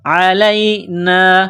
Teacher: عین گلے سے نکلتی ہے، گلے کے درمیان سے زور لگا کر نکالا جاتا ہے عین کو